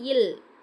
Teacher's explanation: பல்லின் அடியை நாக்கின் ஓரங்கள் தடித்து நெருங்குவதால் பிறக்கும் எழுத்து